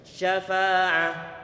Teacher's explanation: Ini huruf shin makhrajnya di pertengahan lidah dan dia memiliki sifat tafasyi, angin perlu disebar ke seluruh mulut.